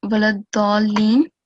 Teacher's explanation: And apart from that, here, waladdaleen, here we have madde kabir, so you need to prolong it for at least 4 seconds